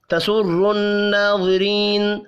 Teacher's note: را کو زیر کی وجہ سے باریک پڑھنا ہے